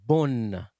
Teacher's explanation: But ba with dhammatain becomes bun, as if there is a noon in here, which gives us the sound un.